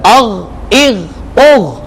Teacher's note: غین ہے حروف مستعلیہ میں سے، اسے موٹا پڑھنا ہے لیکن قلقلہ نہیں کرنا